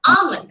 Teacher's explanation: but the l is silent from today put that l to sleep